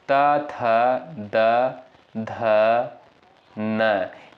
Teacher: जिनका उच्चारण ऊपर के दांतों पर जीभ लगने से होता है उन्हें दंत उच्चारित वर्ड कहते हैं